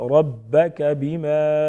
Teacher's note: ربک بما را پر پڑھیں گے موٹا پڑھیں گے. با مشدد ہے مضبوطی کے ساتھ ذرا رک کر ادا کریں گے. بما الف مدہ ایک الف کے برابر کھینچیں گے.